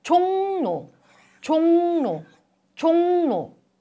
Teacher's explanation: 르 becomes 느 sound under the influence of 응 sound. So there are two nasal sounds. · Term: nasalization